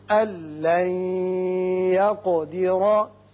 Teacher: نون ساکن کے بعد جب لام آئے تو یہاں ادغام کرتے ہیں لیکن بغیر غنہ